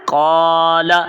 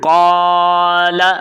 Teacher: یہاں پر قاعدہ ہے الف مدہ کا۔ تو پہلے ہم نے قاف کو الف کی مقدار تک کھینچنا ہے، لام کو حرکات کی مقدار تک پڑھنا ہے